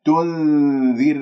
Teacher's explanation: الراء ساكنة قبلها مكسور، إذن ترقق الراء